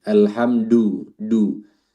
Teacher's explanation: Jadi makhrajnya terlalu naik atau terlalu ke tengah langit-langit. Seharusnya turun, ya maju ke depan.